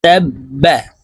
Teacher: তাসদিদওয়ালা হরফ দুইবার উচ্চারণ হয় একবার পূর্বের হরকতের সঙ্গে আরেকবার নিজ হরকতের উচ্চারণ হবে